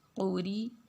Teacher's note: را پہ زیر ہے تو اس را کو ہم نے باریک پڑھنا ہے